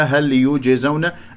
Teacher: هل يجزون إلا ما كانوا يعملون، هكذا هل يجزون، الجيم من أحرف قطب جد، هنا ساكنة قلقلة فيها صغرى في وسط الكلام، يجزون لا أسحب ضمة الياء إلى الجيم الساكنة